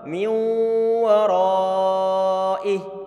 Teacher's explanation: Tadi bacaan idgham bi gunnah. Sehingga kita tahan suara dengungannya. Nunnya dimasukkan dalam huruf waw.